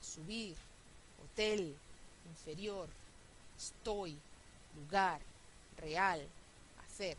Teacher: Todas tienen el estrés al final y terminan en una consonante que no es N y no es S. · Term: agudas